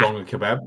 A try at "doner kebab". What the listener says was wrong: No, you don't have a G in that. It's a doner kebab.